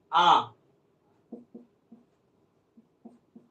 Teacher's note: मुख को पूरा खोला जाता है उसे विवृत कहते हैं